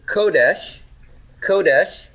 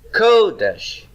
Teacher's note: holiness has first syllable stress